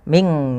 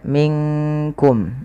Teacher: Dia nunnya samarkan ke kaf, bukan minkum. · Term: ikhfa